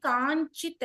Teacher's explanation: అనుస్వారం కాస్త అనునాసికం అయిపోతుంది కాంచిత్ అయింది